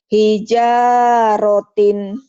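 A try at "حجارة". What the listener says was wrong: tija, bukan. Hi. Kadang-kadangnya kayak tija ya, padahal hi. Hijarotin.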